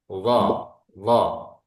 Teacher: Yang keempat adalah itbaq. Suaranya kita mengumpul atau lidah kita nempel nempel di langit-langit. Seolah-olah tak ada suara yang gelempung di dalam mulut kita ini.